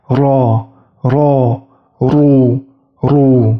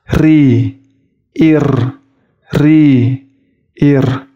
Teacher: Tafkhim dibaca tebal yaitu ketika huruf Ra, Ru itu menyebutkan hurufnya, pangkal lidahnya menuju ke langit-langit.